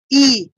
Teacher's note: তালুতে বাড়ি খাবে নয়তো এই কি বলে জিহ্বাটা তালুতে স্পর্শ করবে ই উচ্চারণ করার সময় দেখুন ই একদম তালুতে প্রেসার খাচ্ছে স্বরটা সাউন্ডটা তালুতে প্রেসার দিচ্ছে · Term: তালবর্ণ